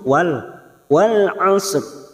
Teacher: huruf ain memiliki sifat tawasud. Pada rongga tengah-tengah tenggorokan lebih menyempit